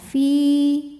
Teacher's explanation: hukumnya adalah Mad thobii karena huruf ini adalah huruf Ya Sukun Ya Sukun didahului harakat kasrah maka panjang dua harakat Fi namun dibaca panjangnya hanya saat berhenti saja Kalau diteruskan madnya